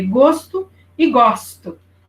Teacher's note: A pronúncia é um pouquinho diferente, né? Porque gosto e gosto. O O aberto e o O fechado